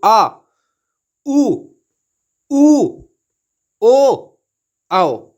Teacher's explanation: इन स्वरों के उच्चारण में जीवा मुंह के पीछे वाले भाग में रहती है। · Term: पश्च स्वर